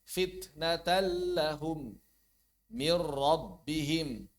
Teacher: Saat bertemu lam dan ro. Caranya langsung mentasdidkan lam dan r-nya ya. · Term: idgham bila ghunah